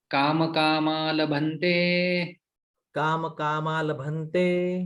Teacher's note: संधि हो जाती है यहाँ पर, ये विसर्ग का लोप हो जाता है